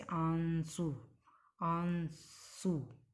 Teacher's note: अनुनासिक के उच्चारण में नाक से बहुत कम सांस निकलती है और मुंह से अधिक सांस निकलती है। जैसे आंसू, आंसू आप बोलकर देख लीजिए।